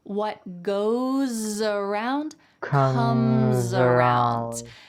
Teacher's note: where the S at the end of goes is followed by a vowel. So that S is going to sound like a Z in American English.